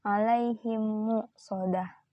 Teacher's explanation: Hukum dari idham mit lain ini adalah dibaca dengan mendengung makhraj huruf hijaiyah. Mimnya jelas dan mengalun kurang lebih sekitar 2 sampai 3 harakat. · Hukum bacaan ini berlaku ketika mim mati bertemu dengan huruf mim. Dibaca menjadi satu seolah-olah menjadi mim bertasydid dengan disertai dengungan. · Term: idham mimi, idgham mimi